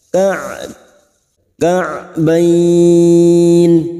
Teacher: huruf Ain memiliki sifat tawasud dan jahar